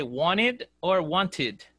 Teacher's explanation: if you have a letter t after the letter n you can omit the letter t so want has a t so that's why you can say